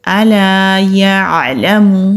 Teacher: अलिफ मद्दा को एक अलिफ के बराबर खींच कर पढ़ते हैं एक अलिफ से मुराद यह है कि जितनी देर तक हम